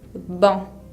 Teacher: Tienen que pronunciar una A nasal tratando de no casi pronunciar la N.